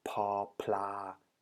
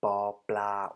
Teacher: without releasing any additional air after the sound at the very beginning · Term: unaspirated consonant